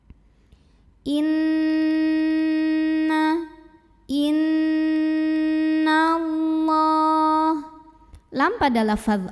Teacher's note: hukum gunnah musyaddah karena nun-nya bertasydid maka cara bacanya didengungkan jadi bunyi n-nya tahan dulu kurang lebih 2 harokat sampai ada getaran halus ke hidung